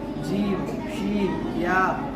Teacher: जीम शी या इन तीनों का मखरज एक ही है। जबान के बीच ऊपर के तालों से मिलकर जीम शी या अदा होता है